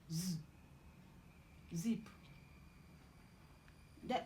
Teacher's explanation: Alveolar fricative, as in z, zip.